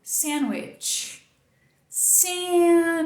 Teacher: Muitas vezes, na fala, esse D é cortado completamente. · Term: apagamento do D